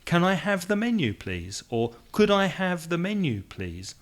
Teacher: so the voice goes up which makes you sound more polite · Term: intonation